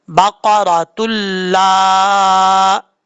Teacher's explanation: یہاں پر تا کو جب لام سے ملائیں گے تو دو پیش کی تنوین کے بعد لام آ رہا ہے، یہاں پہ وہ قاعدہ لگ رہا ہے ادغام یرملون ورا، نون تنوین کے بعد اگر لام آ جائے، لام حروف یرملون میں سے ہے، ادغام تو ہوگا لیکن غنہ نہیں ہوگا، بغیر غننے کے پڑھیں گے